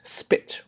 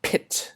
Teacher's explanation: pee without aspiration and with aspiration